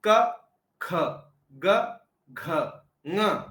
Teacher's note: दूसरा और चौथा क्या हो गया महाप्राण हो गया और पहला तीसरा और पांचवा क्या बन गया अल्पप्राण हो गया